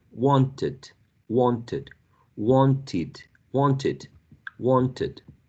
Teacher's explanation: You add it, as in wanted, quite common in RP, or received pronunciation, or you add ed, a schwa and a d